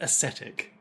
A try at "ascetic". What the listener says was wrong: No, because that's aesthetic. Ascetic would just be arse-etic.